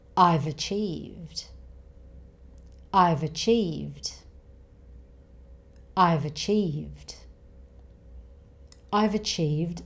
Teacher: I've ends with a v sound, a consonant sound. Achieved begins with a schwa sound, a vowel sound. So consonant and vowel sound together.